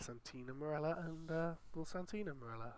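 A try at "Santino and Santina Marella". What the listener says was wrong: Santino and Santina Morella. Oh, it sounded like you just said the exact same word. You got to put the emphasis and or.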